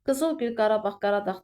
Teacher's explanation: Qızılgül, Qarabağ, Qaradağ tipli sözlərdə isə vurğu ikinci hecanın üzərinə düşmüş olur.